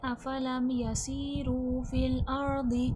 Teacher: سین حرف صفیر ہے، سختی سیٹھی والا حرف ہے، سختی سیٹھی کے ساتھ ادا کیا جائے گا